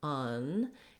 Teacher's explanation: we're going to have a long stressed schwa in this word, un, and you need to hold that for a longer time than the second syllable, der.